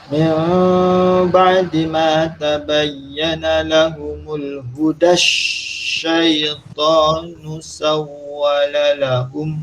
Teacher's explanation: Jadinya huda dengan syaitan tu kena disambungkan.